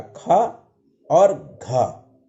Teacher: जिनके उच्चारण में अधिक श्वास की आवश्यकता होती है उन्हें या वे वर्ण महाप्राण वर्ण कहलाते हैं।